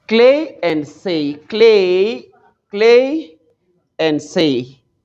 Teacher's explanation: They end in EI, okay? EI, okay? It's a diphthong.